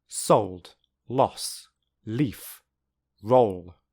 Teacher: So, in words like sold, loss, leaf, roll, the air never stops completely.